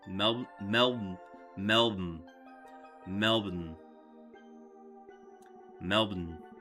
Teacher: People always say Melbourne to try and pronounce it correctly, but it's honestly more like Melbourne. No vowels whatsoever at the end.